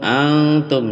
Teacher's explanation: nun sukun bertemu ta ikhfa hakiki